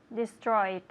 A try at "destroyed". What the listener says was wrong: destroyed. Destroyed. With the D sound, destroyed, but no extra syllable. That is, not destroyed. No. Destroyed. Destroyed.